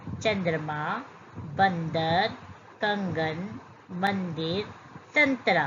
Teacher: इन व्यंजनों को बोलते समय वायु के साथ-साथ नाक से भी बाहर निकलती है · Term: अनुस्वार